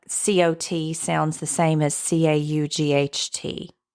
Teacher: The low back merger uses the vowel O, which sounds the same, like COT sounds the same as CAUGHT